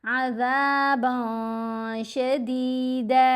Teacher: हमने अज़ाबन में बा 2 ज़बर बन में जो नून है उसको नाक में भी छुपाना है, गुन्ना भी करना है। कैसे, अज़ाबन शदीदा। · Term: एहफ़ा